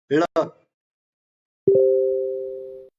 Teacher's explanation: मूर्धन्य म्हणजे वरी टाळूला जीभ लागून गोल घुमत बाहेर आवाज येत होता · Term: मूर्धन्य ळ